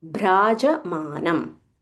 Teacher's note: So this bha is Mahaprana.